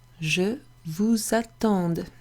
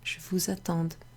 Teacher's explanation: we make a liaison between the S and the A